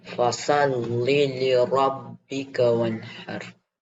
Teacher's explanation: I could hear the ha. You read it from your throat.